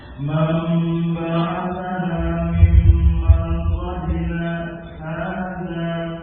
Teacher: nun sukun, ya, ketemu dengan ba iqlab, diganti mim dengan ikhfa'ul mim